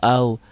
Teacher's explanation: wau dan ya itu huruf pemanjang kok di sini enggak hijau karena ini bukan pemanjang di sini diptong kayak A dan i a a dan u au